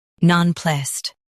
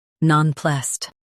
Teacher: In US, stress plussed. In UK, stress non.